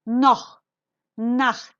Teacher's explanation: Au gibi kalın ünlülerden sonra geldiğinde gırtlaktan çıkan hırıltılı H sesi gibi okunur